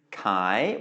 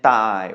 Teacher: you can hear that buy is low tone chi is rising tone and thigh is mid tone